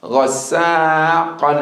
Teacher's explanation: I want to hear the click in the back of the throat when you say the qaf.